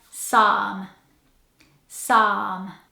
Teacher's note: this word has a silent P, a silent L, and a very long A